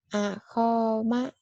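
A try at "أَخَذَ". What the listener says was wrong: Ako ya, bukan aho, tapi ako. Akoma. Akoma.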